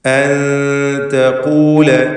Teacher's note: സാക്കിനത്തായ നൂനിനെ ഇഖ്ഫാ ഹഖീഖി നൽകി മറച്ചു മണിച്ച് ഉച്ചരിക്കണം. എന്നിങ്ങനെ അവ്യക്തമാക്കി മണിക്കണം.